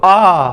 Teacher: विव्रत मतलब पूरा मुंह खुलता है।